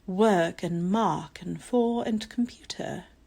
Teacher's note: the British accent often skips over the R sound